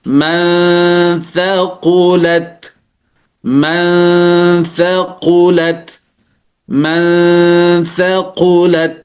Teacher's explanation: Sedangkan yang kedua ini, ikhfa ausat ini adalah dia tidak begitu dekat dan tidak juga begitu jauh daripada makhraj huruf nunnya. Sehingga suara dari bacaan ikhfa ini juga kadang-kadang mengarah kepada n atau eng